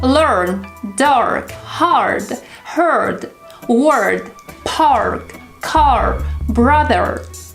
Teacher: It's common in American English to color the sound R, so don't be afraid to exaggerate it.